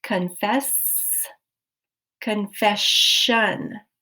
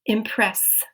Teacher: You get a sh sound, but the spelling did not change.